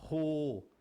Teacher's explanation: representa o H com som levemente de R. O H com U fica Ro.